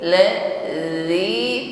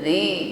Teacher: Pertemukan ujung lidah dengan gigi sari atas ketika mengucapkannya. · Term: huruf zal